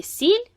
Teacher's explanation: в слові сіль звук с звучить м'яко